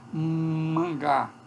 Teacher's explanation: essa nasal que é velar, que é depois do palato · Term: nasal velar